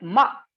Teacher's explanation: tone 7 is a falling tone symbol, abruptly descending pitch